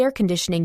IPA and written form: eə kənˈdɪʃnɪŋ (air conditioning)